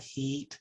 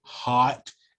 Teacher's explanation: the way heat is pulled way back, heat, and hot, and how your jaw drops down, and the vibration is going to shift within your mouth.